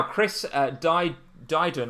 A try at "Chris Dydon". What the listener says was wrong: It's Deedon. You don't pronounce the I.